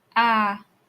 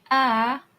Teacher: it's a straight line it's monotonous and it's like you're singing